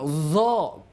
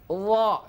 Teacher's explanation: jangan sampai D mengeluarkan udara